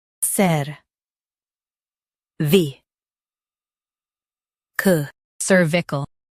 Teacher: Stress cer and keep vi-cal smooth.